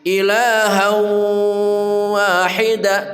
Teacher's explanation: tanwin bertemu waw namanya idgham bi gunnah, masuk dengan mendengung